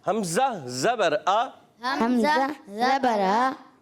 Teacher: حمزہ جو ہوتا ہے نا وہ تھوڑا سا جھٹکے سے پڑھا جاتا ہے